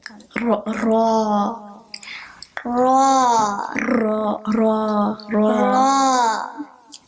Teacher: And the ra has like a rolling of the tongue.